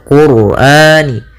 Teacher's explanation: pada lafal ro ini rnya tafkhim ro tebal yaitu kita baca Qurani karena sebelum huruf ro sukun itu ada